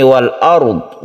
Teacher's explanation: Wal ard ini al bertemu dengan hamzah, ini adalah izhar qamariyah dan tidak masuk ke huruf hamzahnya tapi alnya dibaca jelas